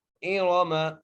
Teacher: حمزہ زیری، را کو موٹا کر کے پڑھنا ہے